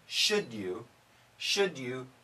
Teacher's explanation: now if we say quickly should you we get that J sound